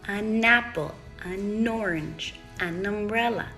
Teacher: However, now that you're moving that n sound that should be quiet over to the noun, which is going to be loud, all of a sudden we have new sounds. You have a loud n. The a is still quiet, but the n that should be quiet is loud.